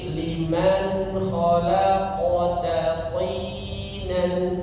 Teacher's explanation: qalqalah ya, itu ketika dia sukun kemudian berada di tengah-tengah kalimat, maka pantulannya kecil saja ya, dan mirip seperti bunyi fathahnya